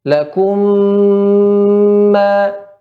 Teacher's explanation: Huruf mim apabila bertemu dengan huruf mim itu sendiri ya, maka dia dimasukkan dengan memanjangkan ya gunnah atau dengung. Akmala ma takun ya, lebih sempurna. · Kita tidak ya mengucapkan mim yang pertama. Ya, seolah mim yang pertama hilang. Lakum ma. Seperti itu. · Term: idgham mimi